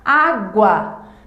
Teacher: perceba que na pronúncia desse ditongo a vogal mais forte de maior tonicidade é a vogal a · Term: ditongo crescente